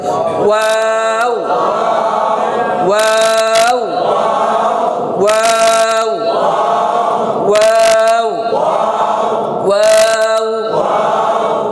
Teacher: ওয়া বলার সময় ঠোঁটটা গোল করে ছেড়ে দিয়ে আবার গোল করতে হবে